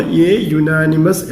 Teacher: അപ്പോൾ യുനാനിമസ്, ഇവിടെ യു എന്നുള്ള ലെറ്റർ അല്ല നോക്കേണ്ടത്, വായിക്കുമ്പോൾ യു എന്നാണ് വായിക്കുന്നത്. അപ്പോൾ യാ എന്നുള്ള ശബ്ദമാണ് നമ്മൾ കേൾക്കുന്നത്. അപ്പോൾ അവിടെ എ യുനാനിമസ് എന്നാണ് പറയേണ്ടത്.